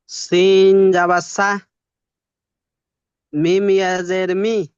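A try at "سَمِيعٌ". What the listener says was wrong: মি, টান দিন, ইয়াস, ইয়া মাদ্দা সামি। জি, আইনটি টান দিন একটু, আইন।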